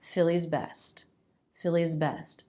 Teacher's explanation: i'm making the z all the way up until i close my lips for the b z continuous sound connected sound philly's best philly's best is best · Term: consonant to consonant links